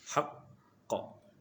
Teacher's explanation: Qalqalah akbar. Bunyi seakan-akan terhenti seketika dia kerana tebalnya dia haqqa. Kemudian sini melantun biasa syadid qalqalah kubra namanya.